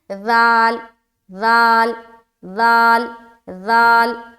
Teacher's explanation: زال کو بعض اوقات لوگ اس طریقے سے ادا کرتے ہیں کہ ان میں سیٹی کی آواز آ جاتی ہے، جبکہ زال میں سیٹی کی آواز نہیں آنی چاہیے۔ اگر آپ زال بولتے ہیں زال تو یہ غلط ہے، ٹھیک ہے، ایسی ساؤنڈ نہیں آئے گی زال میں۔